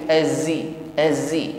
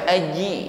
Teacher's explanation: mengucapkan huruf zai ada bunyi desis ya, sifatnya shafir. Azi, jangan sampai aji ya, jangan ditekan terlalu sehingga desisnya hilang.